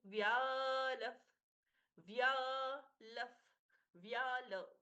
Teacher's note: व के साथ में या दीर्घ अच्छे से उच्चारित होगा। व्यालफ, फ जैसा प्रश्वास।